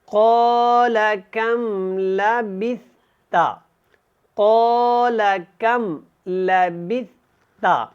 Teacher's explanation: لام کو لمبا نہیں کرنا، سا کو نرمی کے ساتھ ادا کریں. اور اگر ہم یہاں پہ رکیں گے، سٹاپ کریں گے، وقف مطلق ہے، تو یہاں پہ ہم نے تا کو جو ہے وہ ساکن کر دینا ہے.